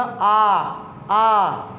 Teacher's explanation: जिस स्वर को बोलने में पूरा मुख खुलता है उसे हम क्या कहेंगे? विवृत।